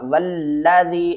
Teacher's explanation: واو لام زبر واللام زبر لا، واللہ ذال یا زیر ذی، والذی، یا ساکن سے پہلے زیر آ جائے تو اس کو ہم نے ایک الف کی مقدار کھینچ کر پڑھنا تھا